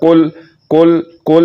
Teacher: یہ کاف زبان کی جڑ اور تالو کے نرم حصے سے نکل رہا ہے، اور یہ کاف زبان کی جڑ تالو کی طرف بلند بھی نہیں ہوگی اور یہ باریک بھی پڑھا جائے گا۔